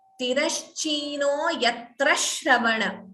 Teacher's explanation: If you choose not to pause after yatra, then it would be chanted as Tirashchino yatra shravana. So dvitvam, that sh is doubling. That only happens if you do not pause after yatra. If you pause, you can chant like we chanted.